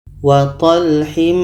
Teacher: Jadi ini kita samarkan. Ketika sebut huruf nun kita sudah merasakan huruf dha. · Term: ikhfa hakiki